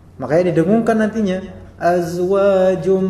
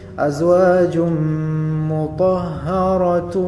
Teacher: Nah, di sini menjadi idgham tanwin ketemu dengan mim, idgham bi ghunnah. Makanya didengungkan